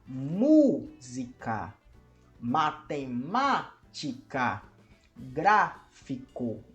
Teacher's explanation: são palavras que tem a sua antepenúltima sílaba como sílaba tônica ou seja como a sílaba que é pronunciada com maior força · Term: palavras proparoxítonas